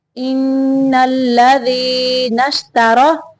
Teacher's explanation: تا کو باریک پڑھنا ہے، را کو موٹا پڑھنا ہے